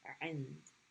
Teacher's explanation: So the ayn is being pronounced with kasra. Stop on the nun at the top of the mouth and then end with dal.